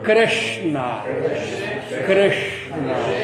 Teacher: Quando você pronuncia o ri, a língua não vai lá para trás? E ela fica lá. Ela vai lá para trás.